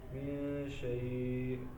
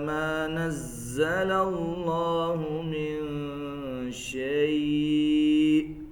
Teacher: آخر میں حمزہ کی آواز آنی چاہیے من شيء جھٹکے کے ساتھ.